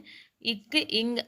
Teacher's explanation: இக் இங் அப்படிங்கறது பின்ன ஒளிகள்